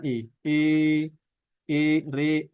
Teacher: dia adalah bunyi yang antum keluarkan harokatnya antara fathah dengan kasroh. Dan dia lebih cenderungnya ke kasroh. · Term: imalah